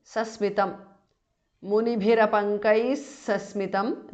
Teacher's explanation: Munibhirapankaihi because of sandhi. Visarga changes to s